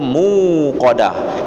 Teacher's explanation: wow maka dia ee Mad Thobi'i wau dipaye panjang 2 harokat Jangan dijadikan Hamzah tidak ada huruf hamzah di situ itu muqadah muu punya dua mukoda bukan muqada bukan dikasih Hamzah